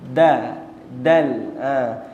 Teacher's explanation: Macam mana sebuah huruf dal, hujung lidah kita kena belakang gigi atas.